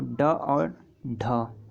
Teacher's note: ड और ढ जो है मूर्धन्य व्यंजन है।